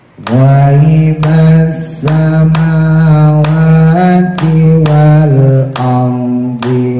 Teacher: Wal ardinya rohnya ditebelin ya, bonya dibembungin. Wa a'lamu hamzanya jangan ditekan, yang ditekannya ain.